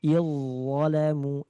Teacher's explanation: zal bertemu dengan lo. Nah, ini sudah jelas langsung melebur ke huruf lo.